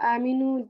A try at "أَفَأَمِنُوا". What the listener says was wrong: No, listen, this is not aminu. Is it aminu? No. Aminu. Don't make a jerk. If you would do a jerk if there was another hamza after the first hamza. So this is aminu.